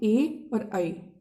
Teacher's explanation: कंठ तालव्य, कंठ प्लस तालु से मिलकर बना है कंठ तालव्य।